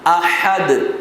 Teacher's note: احد میں جو ہا ہے یہ بھی حروف ہلکی ہیں لیکن ذرا بیچ حلق سے رگڑا کھا کر، جسے دیکھیں میں رگڑ کے ساتھ نکال رہا ہوں، احد، اور صاف میٹھی آواز میں احد۔